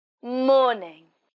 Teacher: The stress on morning is on the first syllable.